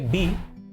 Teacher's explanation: बी में आपके lips join हो रहे हैं